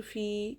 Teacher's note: या साकिन से पहले ज़ेर या मद्दा एक अलिफ के बराबर खींच कर पढ़ेंगे